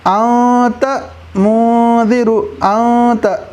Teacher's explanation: اخفاء کا طریقہ ہے کہ نون کی آواز کو ناک میں چھپانا، جیسے انت منذر، انت، تو دیکھو یہاں پر جو نون ہے نا اس نون کی آواز کو ناک میں چھپایا جا رہا ہے۔